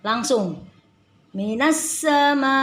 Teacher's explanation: Pada saat kita baca na langsung dibaca sin yang bertasdid. Jadi tidak dibaca minassa, langsung minas sama. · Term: alif lam syamsiyah